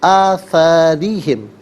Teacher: را کے نیچے زیر ہے، را کو باریک کر کے پڑھیں گے